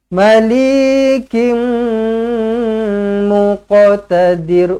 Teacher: Tanwin tak selari bertemu dengan mim sabdu, idgham ma'al gunnah, rapatkan terus bibir, dengungkan 2 harakat.